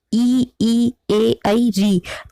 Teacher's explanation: आ, उ, ओ, औ, तो इसमें हमारी जीभ पीछे की तरफ चली जाती है। जब हम ई का उच्चारण करते हैं तो हमारी जीभ आगे की ओर आ जाती है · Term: अग्र स्वर